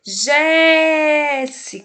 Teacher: o Jé ficou bem forte, ele ficou mais longo na palavra? Jéssica. Então, o Jé é o mais forte. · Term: sílaba tônica